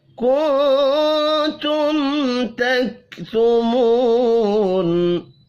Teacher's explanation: کنتم نون ساکن کے بعد تا ہے, اخفاء حقیقی ہوگا · میم ساکن کے بعد تا ہے, یہاں پر اظہار شفی ہوگا, غنہ نہیں ہوگا